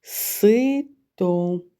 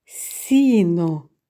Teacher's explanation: у слові сито перший звук с твердий приголосний у слові сіно перший звук с приголосний м'який